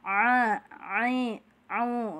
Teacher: mengucapkan huruf Ain yang sempurna harus dialirkan suaranya sampai ketengah tenggorokan Jangan cuman dimulut saja